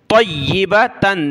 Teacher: طا کو یا کے ساتھ ملایا، یا کو سخت کیا تشدید کی وجہ سے